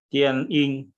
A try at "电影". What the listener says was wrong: Nadanya ya, ing-nya nada 3, Pak. Tian, ing. Iya, di ayunnya nada 3-nya.